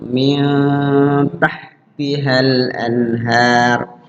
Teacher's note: Min nun ketemu ta adalah ikhfa. Nunnya dibaca samar itu.